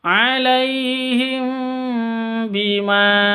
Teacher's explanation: mim mati bertemu dengan ba cara bacanya samar didengungkan karena ini Ikhfa Syafawi hukum mim mati ya atau hukum mim